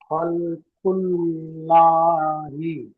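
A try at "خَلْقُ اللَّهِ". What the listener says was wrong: লা হবে না আমার সোনা ভাই, ল হবে, ল ল ল। খলকুল্লাহি। লামের উপরে সাকিন আছে, সাকিন ওয়ালা হরফ ডান দিকের হরফের সাথে মিলিয়ে পড়তে হয়। লামের উপরে সাকিন আছে,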